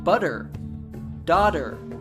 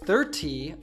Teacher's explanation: when you have a T sound between two vowel sounds in American English it often morphs to a D sound this is often called an American T and it is heard